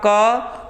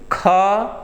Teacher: ख बोलेंगे हवा तेजी से जा करके इस हथेली पर लग रही है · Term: महाप्राण